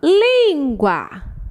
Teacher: Penúltima sílaba mais forte. É uma paroxítona.